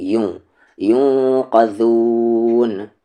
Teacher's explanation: نون ساکن کے بعد قاف اخفا ہوگا